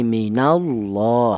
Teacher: Artinya tafkhim tebal, yaitu polanya untuk lafal Allah yang dibaca tebal itu apabila ada lafal Allah seperti ini, di mana lafal Allah itu didahului huruf yang berharakat dhammah atau fathah seperti ini. Itu dibaca tebal, cara bacanya humullah, mullah seperti itu tebal.